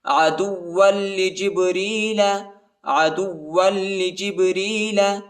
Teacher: قل من كان عدوا لجبريل فإنه نزله، قل من كان، قل من كان، ادھر اخفا ہے، قل من كان عدوا لجبريل، دال کو واو کے ساتھ ملائیں گے اور واو کو لام کے ساتھ ملائیں گے، واو اور لام کو شدت کے ساتھ، سختی کے ساتھ پڑھیں گے. عدوا لجبريل، عدوا لجبريل فإنه، حمزہ کو نون کے ساتھ ملائیں گے اور غنہ بھی کریں گے، ہاں پر الٹا پیش آیا ہے، اس کو ایک الف کی مقدار تک کھینچیں گے.